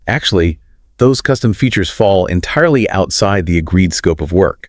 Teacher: When you said agreed scope of work, your pitch dropped significantly. >> It did. The sentence ended on a heavy downward note. · The sentence ended on a heavy downward note. It sounded like a judge bringing down a gavel. · This requires lengthening your pauses to demonstrate professional firmness and using that downward inflection at the end.